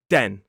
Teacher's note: The main difference again for that voiced th sound in the word then you need to be touching your top teeth with the tip of your tongue. Whereas the d sound is more inside the mouth and the tip of the tongue is touching the roof of the mouth right at the front and then dropping down. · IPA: /den/